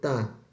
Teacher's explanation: bukan bibir, melainkan ujung lidah menempel dan menutup ke sekitar gigi atas dan gusi atas.